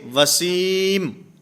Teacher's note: یہاں سین کا میم میں ادغام ہے، اس کو اکٹھے ملا کر پڑھنا ہے۔ جیسے کسی کا نام ہوتا ہے وسیم، اب اس کو وسیم نون ادا کرنے کے بعد میم ادا نہیں کرتے بلکہ وسیم۔